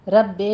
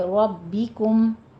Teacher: را کو پر پڑھیں گے، با کے پر تشدید ہے، رب بے نہیں کہیں گے، ربکم.